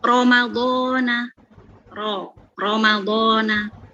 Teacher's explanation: ro yang dibaca tafkhim yang tebal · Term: ro tafkhim